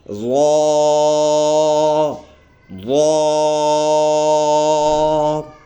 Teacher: اس کو ادا کرتے ہوئے منہ بھر کے پڑھیں گے، موٹا لفظ ادا ہوگا، اور ایک الف کے برابر ہم نے اس کو لمبا کر کے پڑھنا ہوگا، تو یہ لفظ بن جائے گا وا وا۔